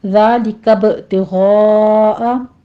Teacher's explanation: با کے اوپر قلقلہ کریں گے اور غین کو پر پڑھتے ہوئے مد متصل واجب ادا کریں گے